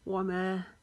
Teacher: माँ को एक अलिफ जितना लंबा करेंगे।